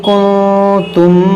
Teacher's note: یہ نون ساکن کے بعد تا ہے، یہاں پر اخفا ہوگا